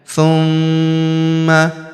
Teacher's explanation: huruf ma kita tahan dan kita tekan serta kita dengungkan dua sampai harakat karena terdapat tanda tasdid di atasnya.